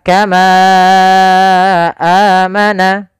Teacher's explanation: hamzah tersebut berada di kata Kama satu kata amana satu kata maka panjangnya Ma harus kita panjangkan sepanjang empat harakat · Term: Mad Jaiz munfasil, mad jaiz munfasil